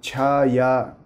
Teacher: tchan forma por exemplo a palavra chaya que significa sombra chá é uma consoante palatal surda aspirada · Ch é uma consoante palatal surda aspirada. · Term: versão aspirada